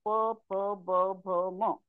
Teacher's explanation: जसं आम्हाला प म्हणायचं असेल तर आम्हाला ओष्ठांची मदत घ्यावी लागते दोन्ही ओठ एकमेकांवर टेकल्यानंतर नंतरच हे शब्द बाहेर पडतात · दोन्ही ओठ एकमेकांवर टेकल्यानंतरच हे शब्द बाहेर पडतात. प फ ब भ म.